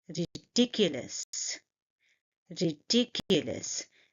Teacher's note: And you see that I'm stressing on the second syllable.